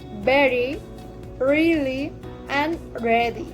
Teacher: The tongue is curved back toward the top of the mouth.